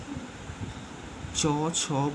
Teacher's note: এগুলো উচ্চারণ করার সময় জীব তালুতে স্পর্শ করছে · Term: তালব্য বর্ণ